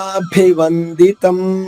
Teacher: పాదా రెండు దీర్ఘాక్షరాలు భి మహాప్రాణము అంటే ఒత్తుభ గురుపాదాభి అనకూడదు గురుపాదాభి వందితం వ తర్వాత అనుస్వరం ఉంది నాలా పలకాలి వందితం